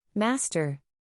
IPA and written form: ˈmæs.tər (Master)